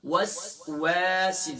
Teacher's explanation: صفت صفیر ہے، یعنی کہ اس کی خوبی یہ جو ادا کرتے وقت سیٹی جیسی آواز نکلے